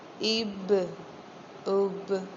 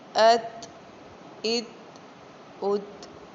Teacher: اب دیکھیں یہ با حروف قلقلہ میں سے ہے تو میں اس کو پڑھ رہی ہوں اب، یعنی با کو ہم نے جنبش دے کے پڑھی ہے، واضح کر کے پڑھا ہے